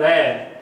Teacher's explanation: यदि हम य, र, ल, व इनमें से उच्चारण करें तो जो र का जब उच्चारण करते हैं तो र के उच्चारण में जीवा में सबसे अधिक कंपन होता है और जीवा कई बार तालु से स्पर्श करती है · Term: परकंपित